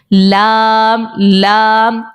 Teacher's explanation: ہاں آپ پڑھیں لام, اس کے مسوڑوں میں جا کے لگ رہا ہے, آپ دیکھ رہے ہوں گے. لام لام, زبان کا کنارہ ہمارے دواحق سے لے کر ثنایا تک کے جو دانت ہیں ان کے مسوڑوں کے ساتھ جا کر لگ رہا ہے تو یہ لام نکل آتا ہے